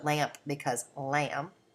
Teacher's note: You also can have a partial cluster reduction where lamp becomes lamb. So you're leaving off that final sound.